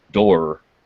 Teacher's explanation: el sonido es un aproximante, así que no hay realmente contacto